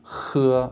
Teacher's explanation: the Chinese H which is not only a little bit more aspirated but it's also got this sort of scratchiness to it